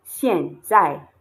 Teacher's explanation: you have two fourth tones, two falling tones